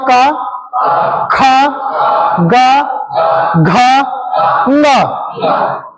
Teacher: इनका शुद्ध उच्चारण कंठ से बोलने से ही होगा, है ना। इनका शुद्ध उच्चारण कैसे होगा? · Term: कंठीय वर्ण